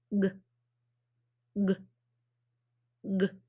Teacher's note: this sound is called a voiced back kicker because the back of your tongue the back of your tongue is kicking that air out of your mouth so the back of your tongue back here it's kicking that